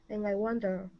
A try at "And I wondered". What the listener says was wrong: Now give me a D sound at the very end. And I wondered.